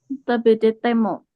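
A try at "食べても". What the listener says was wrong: Jadi T-nya satu saja, hai.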